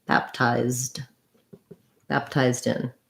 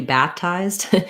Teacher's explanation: you can't leave the pea you don't want to do baptized you do need to actually close the lips for the p